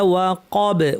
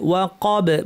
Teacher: ওয়াকাব বাতেও কলকলা করে থামবো।